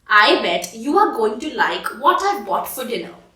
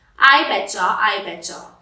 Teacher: often words that end in a T and the next word starts with Y. They merge together and the sound becomes a ch sound. I betcha. And you can also see that the T in what becomes a flat T sound, so it sounds like a D as it is surrounded by two vowels.